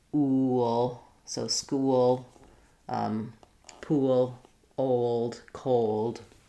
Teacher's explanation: So that's the most important part about dark L, is that I need that vowel to vowel linking, eel, ale, with that y sound. Or if I'm going from a rounded sound like o, like goal, then I'm going to have a little w connecting to the ul.